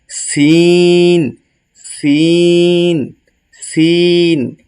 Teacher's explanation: সিনটা হচ্ছে শক্ত করে বাতাস বের হবে না কম কম বের হবে